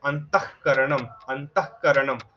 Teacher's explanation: কয়ের আগে একটা ক্ষয়ের মতো হয়ে গেল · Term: জিহ্বামূলীয়